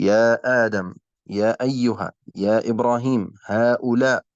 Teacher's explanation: فمقدار المد الجائز 4 أو 5 حركات